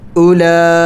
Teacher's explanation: ہے اور کڑی زبر ہے، خوب لمبا کرنا ہے اس کو، مد کو 5 الف کے مقدار لمبا کیا جاتا ہے